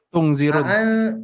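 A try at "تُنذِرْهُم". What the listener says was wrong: Tungdir ya. Tung Ikhfa ini ya. tadi antum Ana sedikit ingin mengoreksi ya. Antum tadi tun ya. Antum baca idhar ya.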